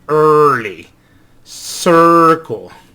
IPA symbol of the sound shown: ɝ